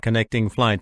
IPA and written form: kəˈnɛktɪŋ flaɪt (connecting flight)